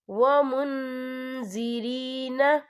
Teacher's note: یا دیکھیں ومن، یہاں نون ساکن ہے، نون ساکن کے بعد جو ہے زا آ رہا ہے، اور زا جو ہے اکفا کا ورڈ ہے تو ہم یہاں اکفا کریں گے، نون ساکن کی آواز کو ناک میں چھپائیں گے